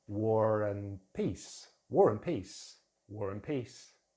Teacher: in connected speech, we can use a linking R sound to connect these words together. So let's look at some examples.